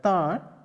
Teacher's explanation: there the vowel a is produced with a nasal, nasality in it